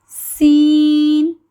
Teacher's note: یہ سیٹی سے پڑھا جانے والا حرف ہے، اس کو پڑھتے ہوئے سیٹی کی آواز آئے گی